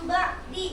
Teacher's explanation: nun mati bertemu huruf ba, dibacanya yaitu langsung digantikan oleh huruf mim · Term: iqlab